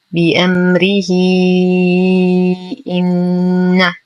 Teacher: نقف على الهاء بسكون عارض ولا صلة فيها حال الوقف، وأما إذا وصلنا فتصبح الهاء مكسورة وبعدها همز في الكلمة الثانية فتحتاج إلى صلة كبرى بمقدار 4 إلى 5 حركات فنقول بأمره إن.